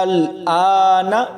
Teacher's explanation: حمزہ کو 4 سے 5 الف کی مقدار تک کھینچ کر پڑھیں گے